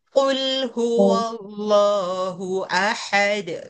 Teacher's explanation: yang paling pangkal lidah kena langit-langit adalah qaf